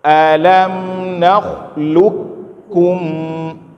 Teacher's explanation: cara baca disini itu dengan dibaca dihilangkan huruf qaf langsung masuk ke huruf Kaf